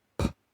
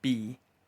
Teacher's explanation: P is voiceless. B is voiced. Words with these sounds are pit, bit, beer, peer, patch, batch.